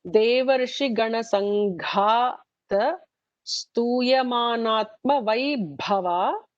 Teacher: So there are 2 Mahapranas, Gana Sangha and the last Vaibha.